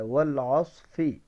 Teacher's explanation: فا اوپر کے دانت نچلے ہونٹ کا اندرونی کنارہ, نچلے ہونٹ کا جو اندرونی حصہ ہے وہاں سے فا ادا ہوتا ہے